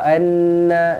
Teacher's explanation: anna nun yang bertanda sabdu wajibul gunnah